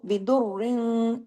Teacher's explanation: दौद और रॉ सख्ती से जुड़ेंगे, तशदीद है, द्वाद को हैवी भी पढ़ेंगे, रॉ को बारीक भी पढ़ेंगे, लेकिन यहाँ पे इख्फा भी होगा, आगे फा है, और गुन्ना कामिला यानी सेकंड लेवल का गुन्ना भी होगा।